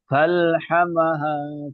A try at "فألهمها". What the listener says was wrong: ফাআলহামাহা, ছোট হা বড় হা উচ্চারণ হয়ে যাচ্ছে। ফাআলহামাহা